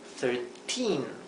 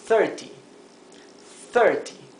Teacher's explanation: En 13, la sílaba tónica está en la última sílaba, 13, mientras que en 30, la sílaba tónica está en la primera sílaba, 30, 30.